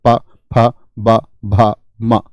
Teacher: पै वर्ग आपका होठ से बोला जाता है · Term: ओष्ठ्य